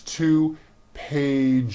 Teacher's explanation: It's 2 pages with a voiced Z. Even though you spell the word like this, in American English you pronounce the word like this.